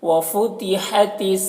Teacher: ہا کی آواز حلق سے نکلتی ہے ہوا کے ساتھ میں